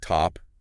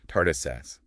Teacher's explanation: No big puff of air like in English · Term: unaspirated